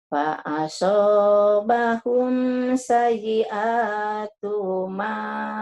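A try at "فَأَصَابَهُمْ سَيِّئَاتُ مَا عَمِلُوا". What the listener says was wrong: Tunya pendek. Sayi'atuma. Tunya pendek Fa'asabahum sayi'atuma. Tasjidnya nyambar Bu ya. Fa'asabahum sayi'atu ma amilu. Nyamber. Kurang nyamber Ibu. Sayyi'a.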